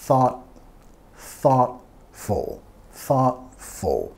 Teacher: vamos a enfatizar la primera sílaba. Thought, thoughtful, thoughtful.